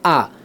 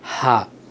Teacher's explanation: হা এটা হচ্ছে রাখাওয়াত বা নরম অক্ষর। এটাকে এত জোর দিয়ে ধাক্কা দিয়ে উচ্চারণ করতে হয় না। স্মুথলি নরমভাবে কোমলভাবে এই হরফটার উচ্চারণ হয়। · হামজা এটা হচ্ছে সিদ্দতের অক্ষর। অর্থাৎ এটাকে একটু ধাক্কা দিয়ে একটু কঠিন করে এটাকে উচ্চারণ করতে হয়।